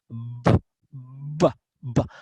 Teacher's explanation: Si ustedes hacen este sonido y se ponen la mano en la garganta, B, B, B, van a sentir que la garganta vibra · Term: sonido ya con vibración